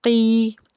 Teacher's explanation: उसके बाद या साकिन है, या साकिन से पीछे ज़ेर होने की वजह से या मद्दा का कायदा है, एक अलिफ के बराबर खींच के पढ़ेंगे